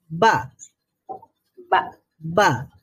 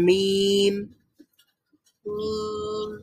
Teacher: বাটা হলো ঠোঁট খোলার সাথে সাথে সাউন্ড বের হয়, আর মিম হচ্ছে ঠোঁট খোলার আগে থেকেই সাউন্ড প্রডিউস হয়